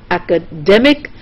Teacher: The K part is stressed, then you have academic, the D part is stressed, then you have academician, the mission part is stressed. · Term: primary stress